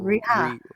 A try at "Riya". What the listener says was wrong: I think you got to put the Y in there. Very good.